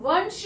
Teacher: अब वंश है, वंश श जो आ रहा है वो इसमें से नहीं है कोई भी वर्ण, लेकिन इसकी साउंड जो है वंश श जब हम बोल रहे हैं तो दांतों के पीछे से हवा बाहर को निकलती है, तब वो श निकलता है। तो यानी कि इसका जो अनुस्वार होगा वो भी दांतों के पीछे से टच होके आ रहा है, इसलिए वंश, तो न की साउंड आ रही है, इसलिए यहाँ पर भी आएगा वंश।